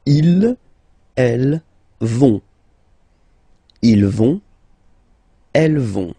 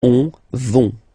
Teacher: final T not pronounced, so you get this ON nasal here